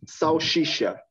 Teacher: people from Rio de Janeiro, for example, the S word, the S letter, they pronounce like sh